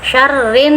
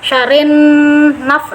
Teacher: nun bertasdid, harus pakai dengungan. Nun gunha itu harus dengung sampai ke rongga hidung